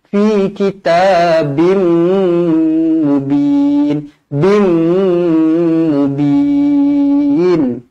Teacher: Tanwin yang tidak selari bertemu huruf mim, hukum dia dekat sini idgham ma'al gunnah, memasukkan bersama-sama dengung. Jadi mestilah dibaca dengung dua harokat di sini.